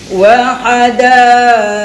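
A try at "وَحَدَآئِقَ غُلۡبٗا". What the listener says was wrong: Jangan muncul qaf kan. Wa hadaiq ulba.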